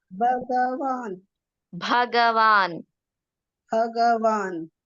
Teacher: ಭಗವಾನ್ ಭ ಮಹಾಪ್ರಾಣ ಕೇಳ್ಬೇಕು